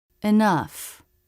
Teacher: Bottom lip to top front teeth.